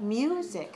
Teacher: music two syllable stress the first syllable